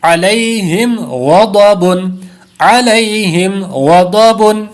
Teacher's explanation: اور اس پر بھی اظہار شفوی کا قاعدہ ہے، اس لیے غنہ نہیں ہوگا. دو حروف مستعلیہ ہیں، دونوں کو پر کریں گے